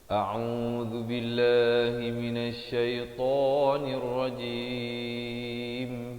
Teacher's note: Lafz jalalah dibaca nipis 2 harakat. · Di akhir barulah dirapatkan mulut bagi menyempurnakan huruf mim